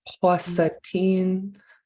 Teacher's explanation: Since you have two Ks together here, you actually pronounce them both.